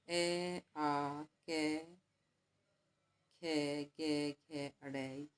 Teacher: ये कंठ से बोले जाते हैं, तो इन वर्णों को कहते हैं कंठीय वर्ण है